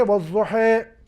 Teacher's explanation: وہ والضحیٰ میں الف کو امالہ کے ساتھ ادا کریں گے